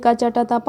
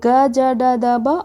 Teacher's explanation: अघोष में आपको क्या था, झंकृत कम करती है, और सघोष में ज़्यादा झंकृत करती है स्वर